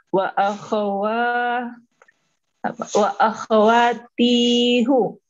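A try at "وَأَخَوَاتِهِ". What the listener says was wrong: Jangan tihu. Ikutin harokat sebelumnya. Domirnya dipaksa ikut harokat sebelumnya. Iya, ikutin harokatnya si domir itu ngikutin. Iya, akhwati. Asalnya kan dia akhwatihu kan gitu kan? Gak enak dibaca akhwatihu, akhwatihi, jadi ngikutin apa? hi.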